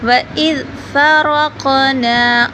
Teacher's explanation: قاف کو موٹا پر کر کے پڑھیں گے، را کو بھی موٹا کر کے پڑھیں گے اور قاف پہ قلقلہ ہوگا